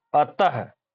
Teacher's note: इसमें हकार की ध्वनि निकलती है जो विसर्ग है। ह के रूप में अतः पढ़ते हैं हम लोग ना, अतः हकार की ध्वनि निकल रही है ना, विसर्ग जहां लगता है।